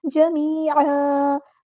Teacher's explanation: عین پر دو زبر ہے اور وقف کرتے ہوئے ہم اسے ایک زبر میں کنورٹ کر دیں گے اور مد اصلی بھی کریں گے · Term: وقف بالابدال